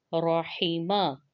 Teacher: را موٹا پڑھا جائے گا، حا باریک پڑھا جائے گا، اور میم بھی باریک حروف میں سے ہے،